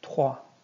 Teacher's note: the O and I is going to make an wa sound. Trois.